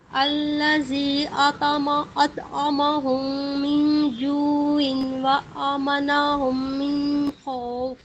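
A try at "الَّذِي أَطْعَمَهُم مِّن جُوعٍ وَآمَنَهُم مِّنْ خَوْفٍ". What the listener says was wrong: ٹھیک ہے، آپ نے ادغام کیا لیکن تھوڑا سا اور ٹائم دینا ہے جو عیوں و، ٹھیک ہے؟ عیوں کے بعد تھوڑا سا رکنا ہے غنہ کرتے ہوئے،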